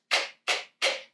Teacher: The tongue is lifting up in the back, touching the velum, but I'm doing it just with air, with no voice.